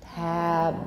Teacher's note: then you've got a final fully voiced b